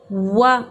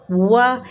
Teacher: زبر کے لیے منہ کھولیں گے، واؤ زبر وا، وا پہلے ہونٹوں کو پورا گول کیا اور زبر پڑھنے کے لیے پھر ہونٹوں کو کھول دیا